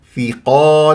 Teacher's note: لا تكور الشفاه قاف مفخمه مرتبه اولى مفتوح بعدها الف زين ما تقول ثقال غلط ثقال تنوين وفتح جا بعدها طبعا